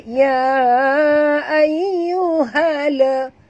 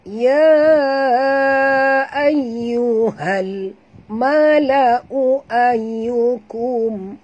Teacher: Bunyikan lam yang mati tanpa lantunan. Jangan baca ya ayyuhala. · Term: alif lam qamariyah